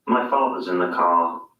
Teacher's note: notice that the final r sound is not pronounced in british english father ends in a simple schwa vowel like father and in